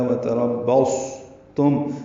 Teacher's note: صاد ساکن ہے اور اس پہ ہمس ہوگا